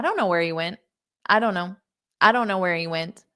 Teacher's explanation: they are so fast it's because of things like this where we take multiple words and we combine them into one word and then we also say it very unstressed as well